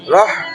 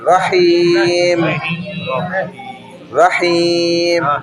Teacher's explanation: رحیم رو کے فوراً بعد ہی پہ آ جائیں